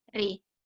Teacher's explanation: Jadi huruf ra dibaca dengan re. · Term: imalah